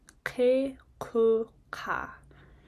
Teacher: When you're doing the K, it's kind of like a choking sound almost. So really getting into, the back of your throat. If you make a H sound like a H, you're almost there.